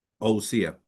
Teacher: cuando hay un diptongo, se juntan la O y la U, y sí, eso sería como usía.